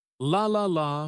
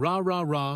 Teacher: The key here is tongue placement. For the L sound, the tongue touches the top of the mouth behind the teeth, but for the R sound, the tongue stays back without touching anything.